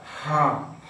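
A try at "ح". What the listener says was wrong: হা আর একটু শক্ত করে হবে।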